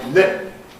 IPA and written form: lɪp̚ (lip)